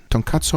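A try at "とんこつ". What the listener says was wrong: Pronounce wrong again. It's tonkotsu, not tonkatsu. Tonkatsu means something else.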